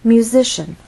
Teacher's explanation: Musician, with stress on the middle syllable. Again, our voice must go up before it goes down.